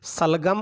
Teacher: अब यहाँ ध्यान दीजिए, तीन हम सकार काम में लेते हैं, उनको उनके उच्चारण स्थान के आधार पर ही नाम भी दिया गया है। जैसे सलगम का जो से है वो तालु से बोला जाता है, तो इस से को हम तालव्य से कह देते हैं।